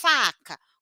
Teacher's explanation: o meu lábio de baixo toca o meu dente de cima fricativo porque sai o ventinho consigo prolongar · olha o dente de cima tá encostando no meu lábio de baixo sai um ventinho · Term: lábio dental